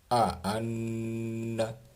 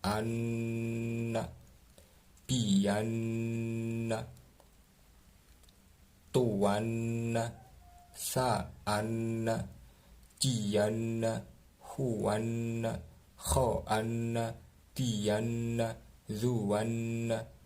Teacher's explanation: Kemudian ghunnah atau berdengung. Bunyi kira-kira lamanya 2 ketukan.